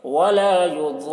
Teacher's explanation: را کو پر پڑھیں گے کیونکہ رائے مشددہ کے اوپر زبر ہے